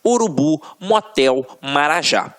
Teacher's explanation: Só a título de exemplificação, observem aqui, ó, oxítonas. A última sílaba é a tônica.